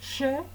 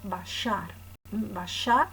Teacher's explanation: La fricativa prepalatal sorda, sh, que se representaba con una X. Esta consonante se pronunciaba como hoy, por ejemplo, en inglés show.